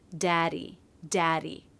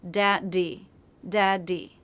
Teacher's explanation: Between vowels, or after an R and before a vowel, it's a different sound because there isn't a stop. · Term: the D between vowels